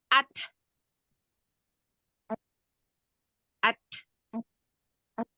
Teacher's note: ada ada nafas yang dilepas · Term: hams